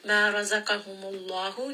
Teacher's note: name of Allah here is heavy. The letter before has a dhamma.